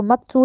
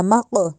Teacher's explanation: ایک تو اس قوف کو موٹا کرنا ہے، دوسرے اس قوف پہ قلقلہ کرنا ہے ، اس کو مقصو نہیں کہنا، مق، ٹھیک ہے، اس کو